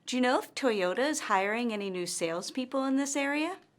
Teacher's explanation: her intonation rises at the end of this yes or no question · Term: rising intonation